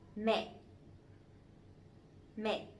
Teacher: Mẹ is mom, right? But this one has the dot, the dấu nặng, the strong tone, so it has to be down and it has to be stronger a little bit